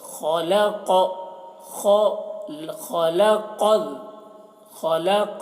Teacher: خا اور قاف دونوں کو موٹا کر کے پڑھ رہے ہیں